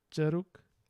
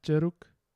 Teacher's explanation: the schwa sounds a little more front than English schwa